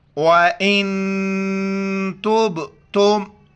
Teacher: नून साकिन है, यहाँ पर नाक में आवाज़ पैदा करनी है